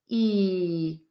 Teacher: the long e in feel is The Smiling vowel with your tongue really high intense and flat in your mouth